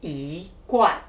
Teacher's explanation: E has changed from the first tone to the second tone, yi, as in yi guan.